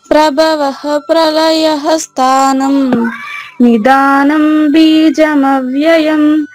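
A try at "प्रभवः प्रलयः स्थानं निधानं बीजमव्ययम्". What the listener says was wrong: Very good, right.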